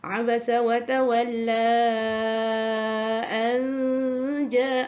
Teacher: wa tawalla dipanjangkan 4 atau 5 harkat kerana berlakunya mad jaiz munfasil, iaitu huruf mad di akhir kalimah pertama.